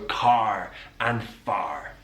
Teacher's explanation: english accents it's non-rhotic so we don't use that r but in the west country that r is pronounced · in the West Country, that R is pronounced, so car and far. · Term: rhotic r, rhotic R